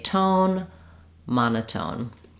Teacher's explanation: in this case it's just the same as in the word tone we use the true aspirated T sound